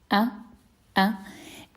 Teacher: it's articulated in the deepest part of the throat. A and um it's very similar to the pause between uh oh. · the hamza is also a glottal stop, we can say, and it's articulated in the deepest part of the throat.